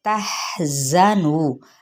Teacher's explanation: زا سفیریہ لیٹر ہے، ذرا تھوڑا سا دبا کے یعنی سختی سے ادا کرتے ہوئے، نو کو مد اصلی بالواو، ٹھیک ہے۔